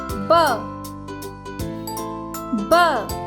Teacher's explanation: The sound B is made by putting your lips together and giving a little pop.